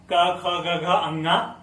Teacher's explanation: जैसे क वर्ग तो कंठ यानी गला से निकला।